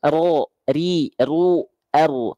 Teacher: Huruf ro itu harus ada getarnya, hati-hati. Karena dia sifatnya warwa wabita kerinjuri.